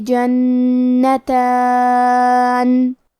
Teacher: کلمت جنتان میں حرف نون پہ تشدید ہے تو ہمیں دو حرف کے برابر نون کو پڑھنا ہے. تا پہ کھڑا زبر ہے تو یہاں مد الف ہے، ہم مد الف کو ظاہر کریں گے